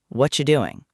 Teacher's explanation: what are you doing? Often sounds like what you doing in casual fast speech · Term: connected speech